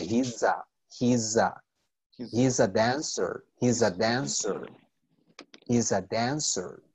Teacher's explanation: Noten que no es una S como en if, sino que suena como un Z bastante suave.